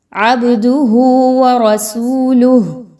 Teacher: عبدہ، با پر قلقلہ، با کو ہلائیں گے، عبدہ، یہاں پہ لوگ کیسے پڑھتے ہیں، عبدہ ورسولہ، جبکہ با کو ہلائیں گے وہاں پہ قلقلہ ہے، را کو پر پڑھیں گے، را پر زبر ہے